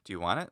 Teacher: In English to say, do you want it? With a rising intonation, at least with American intonation.